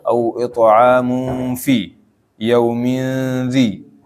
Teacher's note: Au it'amun fi yaumin dhi. Nah, kalau ikhfa begitu, samar, tanwinnya tidak kedengeran, jangan au it'amun, jangan mun, enggak ada nunnya.